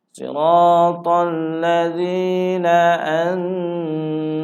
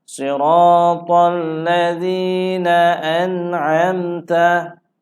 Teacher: tiada dengung pada nun mati sebab berjumpa dengan huruf ain. Okey, tengok selepas huruf nun ada huruf ain. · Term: izhar